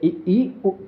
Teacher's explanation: ऐसे स्वर जिनके उच्चारण में मुख द्वार सबसे कम खुलता है या लगभग बंद रहता है संवर्त स्वर कहलाते हैं।